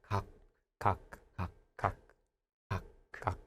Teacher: if it comes at the end of the syllable, it sounds more like a K again.